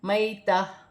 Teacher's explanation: وقف کی صورت میں گر جائے گی اور تا ہا میں بدل جائے گی